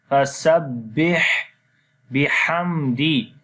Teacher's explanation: And in this ayat, fasabbih on the ba make the strong sound, and when you connect ba with ha, there will be again continuation of our breath due to hums quality in this letter